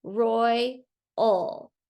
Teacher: that a is making the schwa sound I hear it is combined with the l